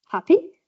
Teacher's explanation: You can say it as a question, and you can say happy with a rise. Yeah, so you say happy, I'm happy.